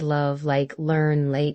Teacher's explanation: tip of tongue touches top of mouth light sound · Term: L sound